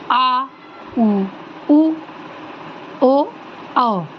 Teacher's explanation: जब आप इन स्वरों का उच्चारण करेंगे तो आपकी जीभ का जो पश्च भाग होगा वो उच्चारण में सहायता करेगा। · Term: पश्च स्वर